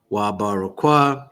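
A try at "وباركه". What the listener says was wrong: It's technically Barakka. Wa'abarakka. You see how there's two kas right next to each other?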